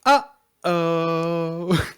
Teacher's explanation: super hard emphasis on the first syllable and a big pause and then the like a song second syllable like he'll say